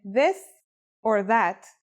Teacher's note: it's pronounced with the tongue between the upper and the lower teeth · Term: voiced sound